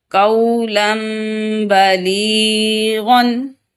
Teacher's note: تنوین کے بعد ہم نے دیکھا کہ با آ رہا ہے، تو اس لیے نون تنوین کو میم سے بدل کر اخفا کریں گے، یعنی غنہ کریں گے۔ یہاں پہ اقلاب کا قاعدہ ہو رہا ہے، کیونکہ نون ساکن یا تنوین کے بعد با آئے تو اقلاب ہوتا ہے۔